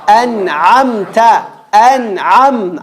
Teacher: Ain. Middle of the throat.